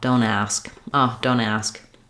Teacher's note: If I'm saying something like don't ask, I'll do the same thing where I might drop that T and link the N right to the vowel.